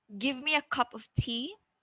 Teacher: we also use rising, falling intonation when you're commanding